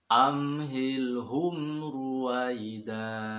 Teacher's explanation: Ada 2 mim, amhilhum ru. Kedua-duanya itu ilhar syafawi. Artinya ilhar harus jelas dan tidak boleh dipanjangkan.